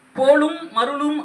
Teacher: முழுமையா இம் வந்து ஒலிக்குது அரை மாத்திரை ஒலிக்குது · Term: மகரம்